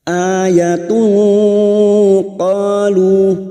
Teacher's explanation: Duma tanwin bertemu qaf ikfa hakiki. Kita samarkan bunyi duma tanwin dan mendengung selama 3 harokat. Qalu masing-masing 2 harokat kita panjangkan.